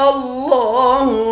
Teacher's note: لفظ اللہ کے لام کو موٹا پڑھیں گے، لفظ اللہ کے لام کے اوپر کھڑا زبر ہے۔